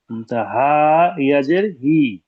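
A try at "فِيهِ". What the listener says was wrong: হায়ের পরে ইয়া নেই। হাজের হি। ফিহি। দিকে জের, ইজরা করুন। সাকিনের ডান দিকে জের এসেছে। একে ইয়া মাদ্দা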